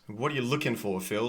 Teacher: we've got a strong stress there on the looking.